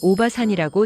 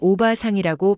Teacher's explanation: 바 뒤에 알을 길게 늘려서 두 박자처럼 발음합니다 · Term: 장음